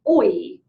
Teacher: So it's kind of like one sound sliding right into another, and that would be called a diphthong.